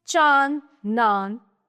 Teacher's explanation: अनुनासिक, अनुनासिक जिसको हम सरल शब्दों में चंद्र बिंदु बोलते हैं। ठीक है, तो इसके उच्चारण के समय हवा नाक और मुंह दोनों से दबाव के साथ बाहर निकलती है। इसका चिन्ह चंद्र बिंदु के रूप में शिरोरेखा के ऊपर लगाया जाता है।